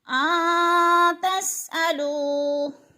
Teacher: نون ساکن کے بعد تا حروف اخفا میں سے ہے تو ادھر اخفا ہوگا یعنی ناک میں آواز لے جائیں گے، لفظ کو چھپا کر پڑھیں گے.